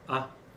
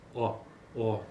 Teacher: se você pronuncia a vogal A, ela não tem arredondamento. Veja a diferença para a vogal O.